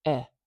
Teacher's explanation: This is the dress vowel, eh. It's naturally very short. And more to the point, it naturally does not like being stretched.